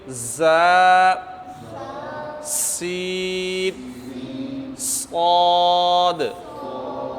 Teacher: جن کے پڑھنے میں سٹی کی آواز آتی ہے، انہیں حروف صفیریہ کہا جاتا ہے